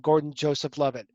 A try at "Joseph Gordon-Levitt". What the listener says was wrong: Gordon-Levitt. Joseph. You said Gordon Joseph Levitt.